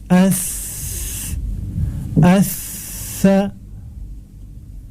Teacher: Hamas bermakna mengalirnya nafas tatkala melafazkan hurufnya. Maka ketika kita melafazkan huruf sa ini, ada aliran nafas yang mengalir. Sa, tidak dibaca dengan kuat, karena semua sifat-sifat yang dia ini sifatnya mengalir menunjukkan tekanannya yang lemah.